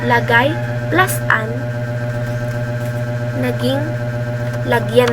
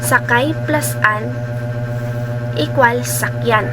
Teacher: Halimbawa po, lagay plus an, naging lagyan na po siya. Papansin po natin na may nakaltas pong ponema dito po sa salita natin na kung saan ito po ay ang ponemang A. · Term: pagkakaltas ng ponema